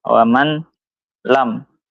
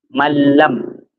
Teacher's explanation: Nun akan hilang langsung lanjut ke lam